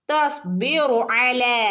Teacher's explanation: അല ലാമിൻ്റെ ഉള്ളിൽ ഒരു അലിഫ് മദ് ഉണ്ട്. മദ് അസ്ലി സാധാരണ മദ്, രണ്ടനക്കം നീട്ടി കൊടുക്കുക